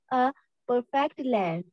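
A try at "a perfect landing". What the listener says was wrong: Landing not लैंड, landing landing okay.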